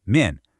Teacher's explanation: Men is that same sharp falling fourth tone we just practiced in fun, men.